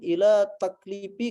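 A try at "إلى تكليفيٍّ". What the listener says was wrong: Ini ya nisbah, harus dibaca tuntas. Ya, ila taklifiyin.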